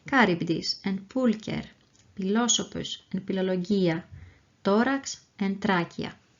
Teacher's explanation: the combinations of the consonants CH, PH, and TH are pronounced as a K, P, and T, respectively.